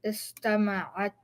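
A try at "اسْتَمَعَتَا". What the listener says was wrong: So now the way you're saying it is istama'atta, like that. You see the shadda here? Get rid of it. Istama'ata.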